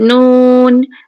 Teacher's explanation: Kalau kita sebut nun, kita sebut mim, okey, maknanya suara itu keluar daripada hidung. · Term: huruf khaisum